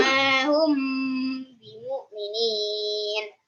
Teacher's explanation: mim sukun bertemu dengan ba, cara membacanya dengan 3 harokat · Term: Iqfa syafawi